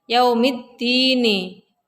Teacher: karena ada huruf lam bertemu dengan huruf Dal cara membacanya dimasukkan ke huruf da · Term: Idgham Syamsiah